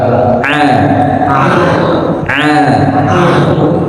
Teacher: huruf ain ini bukan dari hidung tapi dari tenggorokan